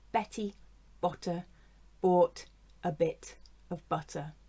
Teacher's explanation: we have the schwa in butter, and in the weak form a bit